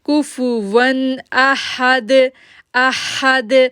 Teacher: اب دیکھیں کیف کو کیف جو ہے وہ باریک پڑھے جانے والے لیٹروں میں سے ہے. ون اب ون پہ ہم غنہ نہیں کریں گے، اگر تنوین کے بعد کوئی اخفا لیٹر میں سے ہوتا تو ہم وہاں پر غنہ کرتے، لیکن یہاں پر اظہار لیٹر ہے اس لیے ہم غنہ نہیں کریں گے.